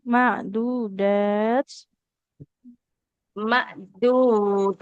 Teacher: Dalnya panjang Ibu. Ada fathah ketemu alif